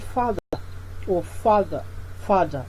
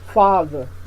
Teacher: the far receives the primary stress